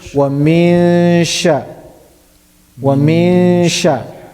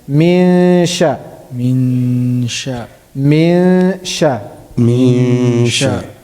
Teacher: I have to do ikhfa, I have to hide the sound of the noon. At the same time, I have to do ghunna, I have to bring my sound from the nasal. At the same time, it should be going towards the sheen.